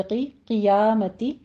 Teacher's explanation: कौफ को पुर पढ़ते हुए नीचे कसरा है तो आवाज़ जो है आप शार्प रखेंगे, क़ियामती नहीं कहेंगे।